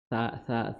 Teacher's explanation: Sala, masala, ya, ma, mim, ya, sudah kita singgung makhrajnya. Kemudian sa di ujung lidah bertemu dengan ujung gigi seri atas. Sa, bukan masala, bukan masa, tapi masa, masala, seperti itu.